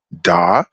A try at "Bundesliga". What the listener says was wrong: Why are you saying das? Des. It's an like an e, like an Bundes